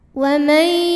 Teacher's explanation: ada hukum idgham bi gunnah karena nun sukun menghadapi huruf ya. Maka nunnya dimasukkan atau dileburkan